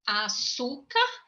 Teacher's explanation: A sílaba tônica desta palavrinha, ela é na segunda sílaba, açúcar, car, a primeira, segunda, e a terceira sílaba.